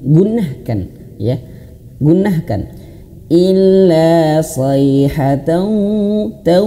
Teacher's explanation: Sayhatan ya, masuk ke huruf waw dan masukkan ke dalam hidung. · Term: idgham ma'al gunnah